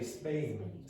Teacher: It sounds a bit like that. It's an unaspirated P, and it makes it sound closer to a B.